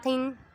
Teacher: قاف حروف مستعلیہ میں سے ہے، اس کو ہم پڑ پڑھیں گے